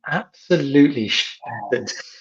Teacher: the stress on the absolutely and then the stress on shattered, breaking down every single syllable, makes it sound so much more dramatic.